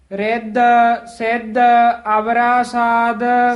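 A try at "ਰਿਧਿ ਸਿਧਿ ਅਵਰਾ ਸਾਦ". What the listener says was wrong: ਸਾਧ ਦੱਦੇ ਦੇ ਨਾਲ ਬੋਲਣਾ ਹੈ, ਇਹਨੂੰ ਸਾਧ ਨਹੀਂ ਕਹਿ ਦੇਣਾ ਹੈ। ਸਾਧ ਸਾਧੂ ਦਾ ਵਾਚਕ ਹੈ, ਸਾਧ ਸਵਾਦ ਦਾ ਵਾਚਕ ਹੈ ਦੱਦੇ ਦੇ ਨਾਲ।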